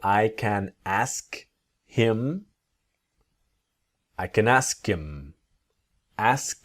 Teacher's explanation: speakers don't always pronounce the letter H when we speak quickly